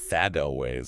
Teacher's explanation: Hearing that quick D sound tells you that two words have linked up.